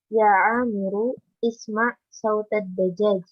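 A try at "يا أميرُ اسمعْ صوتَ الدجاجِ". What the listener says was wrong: Nah, sekarang coba diulang bacanya dengan disambung. Jangan diputus.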